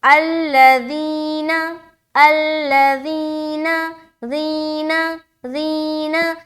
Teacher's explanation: زی میں پریشر ڈالنا ہے کیونکہ یا مدہ کا قاعدہ ہو رہا ہے اور وہاں پر ایک الف کے برابر کھینچنا لازمی ہے